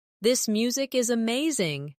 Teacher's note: This music is amazing. Stress amazing to show enthusiasm.